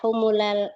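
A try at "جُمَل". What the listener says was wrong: Jumala. Bukan humula, jumala.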